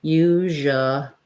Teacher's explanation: about that as u we have the voiced z h sound the j it's like the sh but my voice is on usually so i can say usually usually with an ooh there